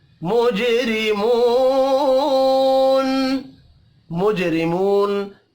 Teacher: را کو زیر کی وجہ سے باریک پڑھنا ہے. · جیم ساکن پر قلقلہ کریں گے.